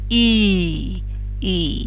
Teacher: you'll probably find that your tongue is far forward in your mouth maintaining the contact slide the sound until you are making um